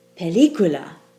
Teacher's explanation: so the stress should fall on the second to last syllable